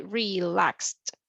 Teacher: the correct pronunciation will be as a T, relaxed